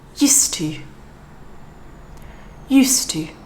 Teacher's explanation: the D at the end of USED is not really super important to be pronounced in this little phrase so we can concentrate more on the T